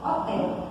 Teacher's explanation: Outros exemplos desse fenômeno que a gente tem na língua é, por exemplo, hotel. Esse H, ele é mudo, tá? É o que a gente chama de letra muda, né? Ele não emite um som.